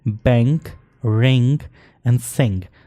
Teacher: इन बैंक न becomes a वीलर nasal allophone इंग due to regressive assimilation